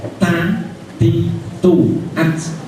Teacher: ada pada ada ujung lidah terkena pangkal gigi pangkal gigi artinya ujung lidah ini nempel di Pangkal gigi pangkal gigi atas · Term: makhraj